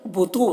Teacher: تو کو یہاں پر پور پڑھیں گے اور واو مدہ ہے، اسے بھی ایک الف کے برابر کھینچ کر پڑھیں گے.